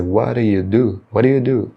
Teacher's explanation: o T final de what vai emendar com o D inicial do do, vai ficar whata, What?